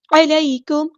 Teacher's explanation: عین کو مستحرک میڈل throat سے ادا کرنا ہے، میم ساکن پر ہم نے اظہار شفوی کرنا ہے، ٹائم نہیں دینا.